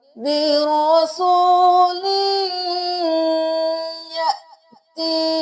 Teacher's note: گے، اور یہاں پہ ہم یاتی نہیں کریں گے، یہاں پہ جزم ہے تو ہم یہاں پہ حمزہ کو جھٹکا دے کے پڑھیں گے